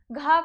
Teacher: क वर्ग के सभी वर्णों का उच्चारण स्थान कंठ होता है, इसीलिए घ का उच्चारण स्थान क्या हो जाएगा, कंठ। घ का उच्चारण स्थान कंठ हो जाएगा